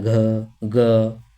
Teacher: अगर हम ग में चले गए तो इसमें थोड़ा सा कंपन पैदा हो रहा है